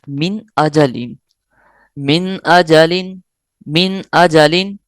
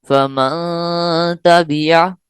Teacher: ما یہاں من پڑھنا تھا لیکن غنہ کیا تو اس کو چھپا لیا ہم نے ناک میں نا. نون کو ہم نون ساکن کو چھپا لیا ناک میں ہم نے.